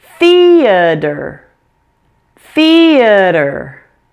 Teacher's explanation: and one more thing the T is a flap · but it's more complicated than that this word has three syllables make sure that the first syllable is stressed say it louder and longer than the others reduce the a in the middle to a fast quiet schwa and fully pronounce the sound at the end there it is · the T is a flap. Pronounce it as a D.